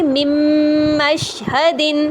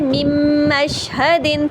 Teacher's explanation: نون مکمل مرج ہو جاتا ہے میم کے اندر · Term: ادغام بھی غنہ کاملہ